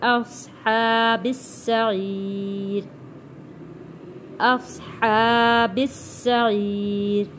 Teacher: سین کی سیٹی والی آواز آئے گی اور سین سختی کے ساتھ پڑھا جائے گا کیونکہ سین کے اوپر تشدید ہے۔